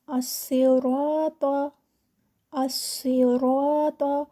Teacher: स्वाद मोटा है र मोटा है और त भी मोटा है